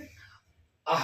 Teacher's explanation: ವಿಸರ್ಗ ಅಂತಂದ್ರೆ ಅಹ ಅನ್ನೋ ಒಂದು ಅಕ್ಷರ ಗಂಟ್ಲಿಂದ ಉತ್ಪತ್ತಿ ಆಗುತ್ತಲ್ಲ